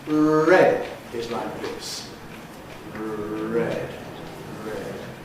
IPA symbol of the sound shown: ɹed